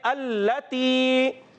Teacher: لام مشدد ہے، رک کر ادا کریں گے، یا مدہ، حرف مدہ کو ایک الف کھینچ کر ادا کرتے ہیں